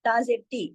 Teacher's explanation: इसको लंबा नहीं खींचना, एक हरकत पढ़ा जाएगा